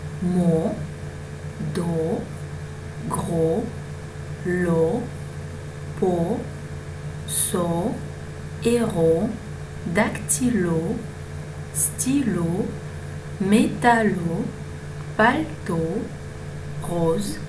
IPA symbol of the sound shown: o